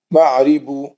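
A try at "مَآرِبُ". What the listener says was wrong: نہیں، معارب، میم پہ زبر ہے، الف پہ کھڑا زبر ہے،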